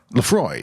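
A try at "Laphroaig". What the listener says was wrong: But it's a G.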